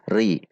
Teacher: Ra ketika kasrah maka dibaca tipis ri.